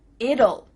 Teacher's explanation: when we say the contraction it will we kind of add a little u sound before the L it kind of sounds like ull so here we have two